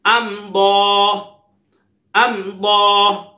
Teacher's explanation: امضا، امضا، میم ساکن کے بعد دعا دار ہے، اظہار شفوی ہوگا، غنہ نہیں کریں گے